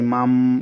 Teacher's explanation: এই যে ছোট্ট একটা মিম দেখছেন, এই নুনটা মিম হয়ে যাবে, কারণ নুন সাকিনের পরে বা আসার কারণে। মিম নুন জবর মাম, বা, বা জবর বা, খ জের খি, লাম জবর লা, মাম বা খিলা।